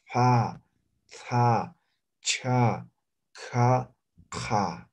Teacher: se pronuncia de forma aspirada